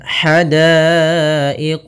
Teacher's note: ha kecil halus dari tengah tenggorokan kita. Daiqah, di sini ada hukum tajwid berupa mad wajib muttasil, yaitu apabila terjadi adanya hamzah datang setelah huruf mad, maka kita namakan dengan mad wajib muttasil.